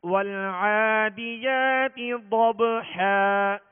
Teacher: اعوذ باللہ من الشیطان الرجیم، بسم اللہ الرحمن الرحیم، والعادیات ضبحا، وال لام کا جو سکون ہے یہ کامل پڑھیں گے، اور اس میں آواز ہلے گی نہیں، جنبش نہیں ہوگی، قلقلہ نہیں ہوگا، بلکہ سکون کو کامل ادا کرنا ہے۔ ول عین پر کھڑا زبر، ایک الف کی مقدار کھینچیں گے، دال کے نیچے زیر ہے، معروف طریقے سے آواز کو گرا کر بغیر کھینچے بغیر جھٹکا دیے پڑھیں گے۔